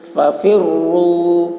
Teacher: رائے مشددہ کے اوپر پیش ہے اس لیے را کو پر پڑھیں گے.